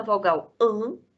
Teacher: E na vogal AN, nós temos a participação da cavidade nasal porque o véu abaixa. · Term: vogal nasal